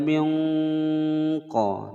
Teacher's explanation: nun sukun bertemu dengan huruf qaf disamarkan dan didengungkan selama dua ketukan. Hukum bacaan ikhfa.